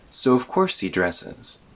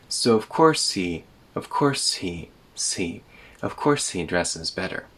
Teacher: The H gets removed, but this only happens if you're speaking very quickly.